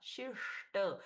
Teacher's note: शिष्ट आधा श हो गया मूर्धन्य तो ये दोनों भी हम अच्छे से उच्चारित कर सकते हैं।